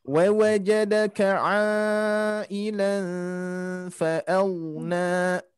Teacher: ilan tanwin bertemu fa, ikhfa ditahan.